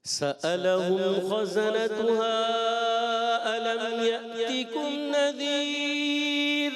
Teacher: را کو آخر میں ہم نے باریک پڑھنا ہے.